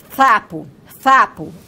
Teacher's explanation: Seus pais, porém, preocupados porque fala com o que as pessoas chamam de língua presa, isto é, a realização dos fonemas sa e za não é feita como esperado, pois ela pronuncia, por exemplo, o sa de sapo com a língua entre os dentes incisivos, né? Seria uma consoante interdental, como nós costumamos chamar.